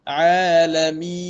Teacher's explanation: huruf nun sukun di akhir kalimah, man'adub disukun, sempurnakan supaya tak jadi macam huruf dal